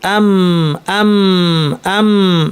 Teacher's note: মিমে নাকটা খুলে যাবে ফলে নাক থেকে গুন্না হবে